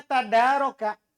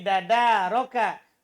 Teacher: Asalnya tadaroka. Kemudian huruf ta diubah menjadi dal. Huruf ta jadi dal. Karena terletak sebelum dal. Menjadi dadaroka. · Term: idgham